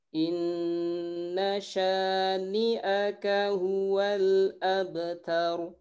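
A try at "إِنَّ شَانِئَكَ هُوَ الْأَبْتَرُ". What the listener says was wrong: Baik, tadi shinnya kurang menyebar sedikit lagi. Sya. Itu saja ya, hati-hati di huruf shinnya.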